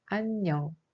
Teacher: In the syllable '안', 'ieung' has no sound but in the case of '녕', 'ieung' has a sound 'eung'